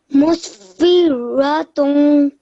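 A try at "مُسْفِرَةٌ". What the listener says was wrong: Well done, mashallah.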